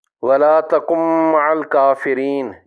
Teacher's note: ادغام متقاربین کی مزید ایک اور مثال قرآن عظیم کی سورہ ہود کی آیت نمبر 42 سے لی گئی ہے: وَلَا تَکُن مَعَ الْکَافِرِینَ۔ یہاں بھی نون مجزوم کا میم مشدد میں ادغام ہوگا اور میم مشدد کا غنہ کیا جائے گا۔